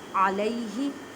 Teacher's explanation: علیہ، عین کو حلق کے درمیان والے حصے سے ادا کریں، یا ساکن سے پہلے زبر یا لین کا قاعدہ کریں۔ ہا کو حلق کے نیچے والے حصے سے ادا کریں